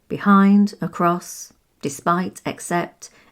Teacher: prepositions have the emphasis on the second syllable